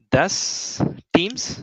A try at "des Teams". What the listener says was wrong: not das, des.